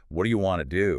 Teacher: See how much shorter and different that is. What do you? Links and changes sound to wadaya, What do ya? and want to smoothly becomes wanna. It feels faster, but it's really just the sounds connecting and changing.